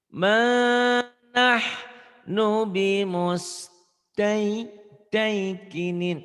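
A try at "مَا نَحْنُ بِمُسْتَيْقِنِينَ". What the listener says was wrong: Tainya kamu kurang ini Taiwan. Tainya masih ketahan. Taikinin. Kurang lepas.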